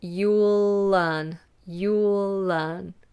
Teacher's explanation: that el carries over into the word learn